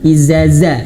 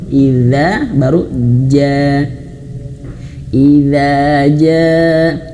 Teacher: huruf jim dan huruf dzal ini dia tidak mengalir nafas ya.